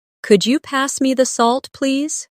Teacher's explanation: Listen to the way my voice rises on Could you? and falls gently at the end.